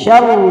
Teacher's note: شر را کو پر کر کے پڑھیں گے